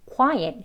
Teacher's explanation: 이게 강세가 1음절, 2음절로 나뉘는데요. 첫 번째 음절에 있습니다.